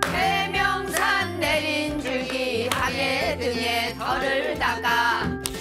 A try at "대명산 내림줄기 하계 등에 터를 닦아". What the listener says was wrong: 평이하게 가야 돼. 거기를 들었다 놓지 말고 이게 매짐이 아니니까.